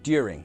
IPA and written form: djʊərɪŋ (during)